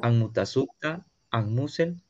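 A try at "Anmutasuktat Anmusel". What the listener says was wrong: La T de los plurales no se oyó. Puede ser que no lo haya escrito o puede ser que no lo pronunció bien. Entonces sería Timutasugtat, Anmutasugtat, Mutasugtat. Vea, con la T del final porque si no, no suena plural. La T le faltó a las últimas tres nada más, al final.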